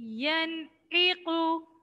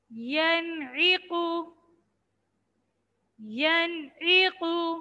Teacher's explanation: नून साकिन के बाद हुरूफ़े हल्की में से ऐन आया, जैसे यनइक़ु, तो यहाँ इजहार करेंगे, गुन्ना नहीं करेंगे।